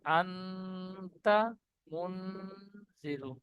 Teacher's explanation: জালের নিচে জের এসেছে, জেরটি হারাকাত, হারাকাত তাড়াতাড়ি পড়তে হয়, টান দেওয়া নিষেধ। রর উপরে পেশ এসেছে, তাই রকে পুর করে পড়ব